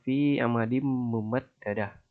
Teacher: nun matinya itu seperti hilang tapi digantikan dengan mim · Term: idgham bigunah